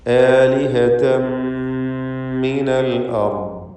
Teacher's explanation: ആലിഹതൻ എന്നതിലെ തൻവീനിനെ ശേഷമുള്ള മീമിൽ പൂർണ്ണമായും ലയിപ്പിച്ച് മണിച്ചുകൊണ്ട് ഇദ്ഗാം ബിഗുന്ന കാമിൽ നൽകി ഉച്ചരിക്കണം. ആലിഹതൻ മിനൽ അർദ്, അൽ അർദ് റാഇനും ദ്വാദിനും തഫ്ഖീമാണ്.